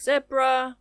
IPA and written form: ˈzɛbrə (zebra)